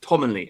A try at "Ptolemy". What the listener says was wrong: Ptolemy, the P is silent.